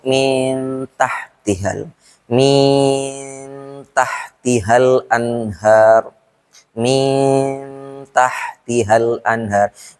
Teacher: ikhfanya itu lebih lama daripada ghunnahnya dengan artian tidak langsung dimasukkan ke hurufnya ambil contoh eh di · ikhfa-nya itu lebih lama daripada gunnahnya